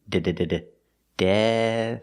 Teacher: we start with a D with the tongue back behind the teeth d d dead F and we finish with a soft th